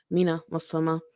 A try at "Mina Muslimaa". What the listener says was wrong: That might be correct, but I usually say Minaa Muslimaa. sounds like there's E in there, but there's not.